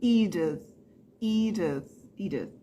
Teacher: A primeira sílaba é a sílaba tônica, né? Stress syllable é o I.